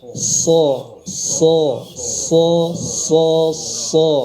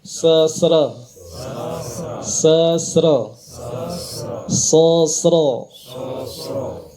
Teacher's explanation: huruf Shad itu ketebalannya dikunci oleh pangkal lidah dan fungsi rahang ini untuk mengunci agar pangkal lidahnya itu tidak turun